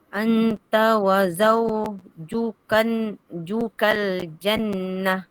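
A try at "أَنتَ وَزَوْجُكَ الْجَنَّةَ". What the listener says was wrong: Anta, cukupkan dengung dia. 2 harakat. Anta wa zawjukal jannah.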